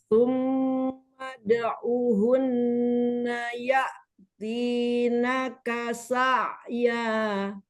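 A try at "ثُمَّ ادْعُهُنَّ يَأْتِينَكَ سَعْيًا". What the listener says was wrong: Iya-nya jadi 3 harokat itu, 2,5. Jangan dinadain. Iya, jadi hati-hati. Kalau kita mau bergoyang, nada di yang panjang 4 aja. Kalau 2 harokat itu pasti lebih.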